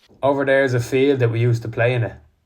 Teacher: the speaker is pronouncing the T as a glottal stop between vowels which is common in North Dublin Accents